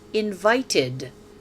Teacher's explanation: The ed is pronounced ed because the invite ends with a t.